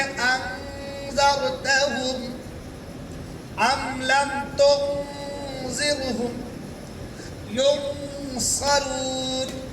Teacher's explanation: जाल इख्फा के हरूफ हैं, जाल इख्फा के हरूफ हैं। अब वहाँ जो अन में जो नून है वो नून की आवाज नाक में छुप जाएगी